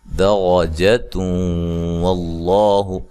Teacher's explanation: لفظ اللہ کو موٹا ادا کرنا ہے، اس سے پہلے زبر ہے